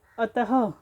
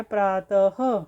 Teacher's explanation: मतलब विसर्ग का उच्चारण हम ह के समान होता है मतलब जब हम विसर्ग का उच्चारण करेंगे तो ह की ध्वनि आएगी · विसर्ग का उच्चारण ह के साथ होता है